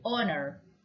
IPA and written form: ˈɑː.nɚ (HONOR)